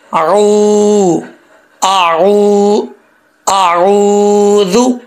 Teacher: اکثر لوگ پڑھتے ہیں اعوذ باللہ من الشیطان، ایسا نہیں کرنا، حمزہ کو بھی کلیئر کرنا ہے، عین کو بھی کلیئر کرنا ہے۔ عین کے آگے واو آ رہا ہے تو عین کو واو سے جو ہے جب ملائیں گے تو لمبا کریں گے، یہ واو مدہ ہے، 1 الف کی مقدار اس کو کھینچیں گے، ٹھیک ہے۔